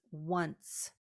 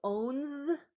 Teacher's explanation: Now, around the 16th century, the ES was replaced by the CE to show that we have what's called a voiceless s at the end of once, as opposed to that z sound that we hear at the end of ones